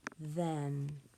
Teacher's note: That consonant digraph, TH, is voiced.